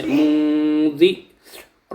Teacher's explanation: نون ساکن کے بعد حروف اخفا کا حرف آ رہا ہے جس کی وجہ سے آواز ناک میں جائے گی، غننے کے ساتھ پڑھیں گے